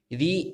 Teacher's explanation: री एकमात्र ऐसा स्वर है जो मूर्धा के द्वारा बोला जाता है